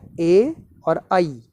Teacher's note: इनका जो उच्चारण स्थान है वो कंठ और तालु होता है। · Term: कंठतालु